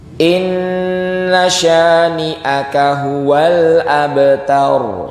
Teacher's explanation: Latih terus. Nun tasydid gunnah ya, ditahan Bapak Ibu.